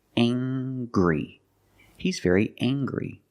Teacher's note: We use the nasal sound, plus the hard G.